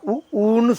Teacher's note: உதடுகள் குவிவதால் உ பிறக்கிறது